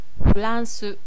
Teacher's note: c'est entre R et L c'est un peu plus enroulé qu'un l